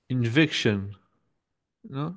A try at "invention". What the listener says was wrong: C'est pas un C. Là, t'es une lettre d'erreur, là. Là, tu m'as dit invection, comme ça.